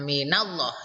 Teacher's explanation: lafal Allah lamjalalah nya ini dibaca tebal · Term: tafkhim tebal